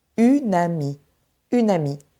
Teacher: Le N de une glisse vers le mot ami. Et on entend une amie, une amie. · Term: enchaînements consonantiques